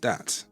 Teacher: replacing the TH with a T or D